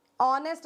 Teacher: That is a vowel sound you are getting to hear. You are not able to listen the alphabet H. H is silent here.